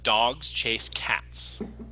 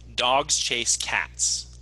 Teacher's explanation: dogs chase cats generally evenly-spaced when we say it naturally